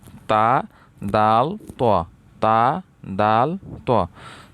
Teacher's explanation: জিহ্বার আগা সামনের উপরের দুই দাঁতের গোড়ার সঙ্গে লাগাইয়া